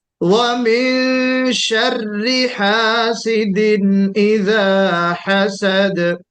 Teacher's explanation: وَمِن شَرِّ ہے, شَرِّ ہے نا, اس میں را کے اوپر شدہ ہے, 2 مرتبہ را کو پڑھنا ہے